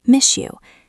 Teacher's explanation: S + Y equals sh.